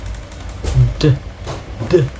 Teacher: similar to t but with vocal cord vibration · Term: voiced one